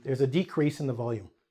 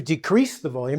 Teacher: in this case, a decrease, we'll really emphasize the DE.